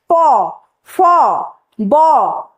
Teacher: যেই বর্গে দুটো ঠোট স্পর্শ হবে। প ফ ব প্রত্যেকটা উচ্চারণ করতে গিয়ে দুটো ঠোটে স্পর্শ হচ্ছে। সেই কারণে তাকে বলা হয় অষ্ঠ বর্গ।